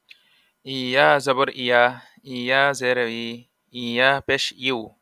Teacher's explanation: ইয়া উচ্চারণ কেমন হবে? ইয়া জিহ্বার মাঝ হতে নরমভাবে আদায় হবে।